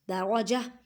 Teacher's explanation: جب وقف کریں گے تو تا کی آواز کو ہاں میں بدل دیں